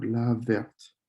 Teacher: when there's the e in the feminine form you're going to pronounce the t